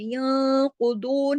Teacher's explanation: द्वाद भी मोटा है और द्वाद दो हरकत खींचेगा वाव मद्दा की वजह से। ये जो है ये वाव मद्दा है।